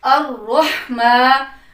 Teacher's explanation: الرحمن ہا کی آواز کو اچھے سے گلے کے درمیان سے نکالنا ہے